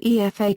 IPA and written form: juːˈeɪfə (UEFA)